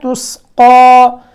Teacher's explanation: تا کے بعد سین، سین باریک، قاف کے اوپر کھڑا زبر، قاف موٹا لفظ